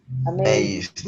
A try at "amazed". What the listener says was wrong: Okay, please do not explode yet. D. No exploten la D.